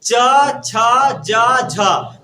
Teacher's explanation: जीभ कहाँ जाता है? तालु के पास। ऊपर में जो तालु है वहीं जाता है।